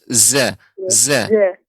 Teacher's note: Jadi harus lebih banyak z, ya, lebih banyak seperti desis. Za, za. Tidak ja kurang. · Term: huruf zai